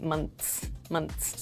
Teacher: So, regarding your second question about the S sound, in a word like months, your tongue touches the back of your teeth and we make like a quick S sound